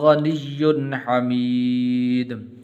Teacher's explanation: یہاں پر غنہ نہیں کریں گے اس لیے کہ آگے حا حروف حلقی میں سے ہے